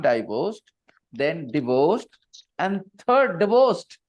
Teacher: divorced stress is on the second syllable and that's why the first syllable is flexible